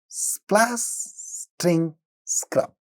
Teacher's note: you have a cluster of three consonant sounds in the beginning of word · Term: cluster of 3 consonant sounds